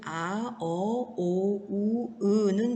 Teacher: 이를 제외한 나머지 모음들은 대체로 후설모음입니다. 그래서 우리 기본 모음인 아, 어, 오, 우, 으는 모두 후설모음에 해당하고요